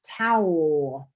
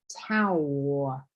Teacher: tongue is going in the very back of your throat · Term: L at the end